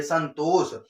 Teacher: देखेंगे जीभ आपकी कहां लड़ जाएगी, दांत से आपकी लड़ जाती है